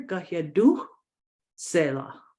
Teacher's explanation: it's almost like the almost silent H that you're highlighting in the word